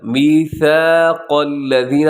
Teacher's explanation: قاف اس پہ موٹا ہے، ثا کے اندر سیٹی نہیں ہے